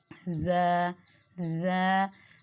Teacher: ज को जब आप जुबान की नोक से अदा करते हैं तो सीटी की सी आवाज आती है · جب آپ زبان کی نوک سے ادا کرتے ہیں تو سیٹی کی سی آواز آتی ہے، اس لیے میں نے کے ساتھ لکھا ہے کہ جب ہم زا کو ادا کرتے ہیں تو سیٹی کی آواز آتی ہے۔